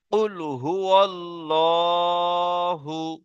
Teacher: আল্লাহ শব্দকে কি করে পড়তে হবে পুর করে পড়তে হবে